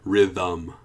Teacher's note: even though there's no letter there we still have a schwa